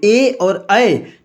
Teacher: हम कंठ से भी बोल रहे हैं और हमारी जीभ जो है हल्का सा तालु को भी टच कर रही है, तो इसीलिए ये कंठ और तालु हो जाएंगे।